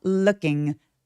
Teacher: 그리고 여러분 룩 발음할 때루킹 아니고요. 입술 내밀지 않고 으에 가까운 발음으로 발음해요.